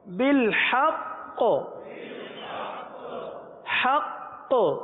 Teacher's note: آگے وقف بالحق. وقف میں قلقلہ مشدد ادا ہوگا کیونکہ تشدید وقف میں باقی رہتی ختم نہیں ہوتی، اس لیے یہاں قلقلہ ہوگا